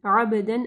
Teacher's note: आइन को वाज़िह पढ़ना है, बा के ऊपर कलकला करना है